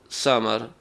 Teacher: آواز کو باریک کریں گے سیٹی کے ساتھ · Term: سین